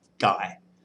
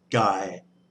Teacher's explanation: with the low tone, you just need to go down in your register.